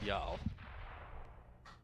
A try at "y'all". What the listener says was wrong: You're saying yeah. It's like you're gargling. Like you're gargling mouthwash, y'all.